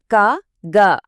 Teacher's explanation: క గ అన్నప్పుడు ఆ శబ్దం గొంతు లోపల నుంచే వస్తుంది